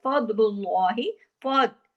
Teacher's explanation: फा बारीक लेकिन दौद मोटा